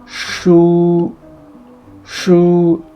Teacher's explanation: This sh is pretty much like this sh in shu. Your lips are protruded and also round.